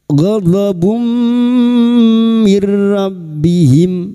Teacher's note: masuk dengan mendengung masuk ke huruf mim dan mendengung selama tiga harakat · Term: idgham bighuna